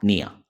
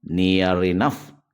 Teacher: a letter r in word final position is normally pronounced before a following vowel but is silent before A following കോൺസനെന്റ് കൂടുതൽ നമുക്ക് നോക്കാം സി